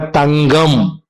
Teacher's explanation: இப்ப நல்லா பாருங்க, கா தங்கம் கம், மெல்லெழுத்தை அடுத்து வரும் பொழுது ஜி போன்று ஒலிக்கின்றது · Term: மாற்றொலி